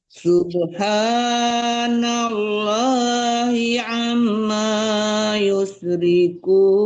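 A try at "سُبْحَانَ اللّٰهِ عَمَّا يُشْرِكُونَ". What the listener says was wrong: Dengungnya yang kurang guna mana ibu ya? Dengungnya ya, mim tasdid itu guna artinya dengung ya. Ya paling kurang 2 harkat lah mendengungkan huruf ya, paling sedikit ya, paling maksimalnya 4 harkat, paling minimnya 2 harkat.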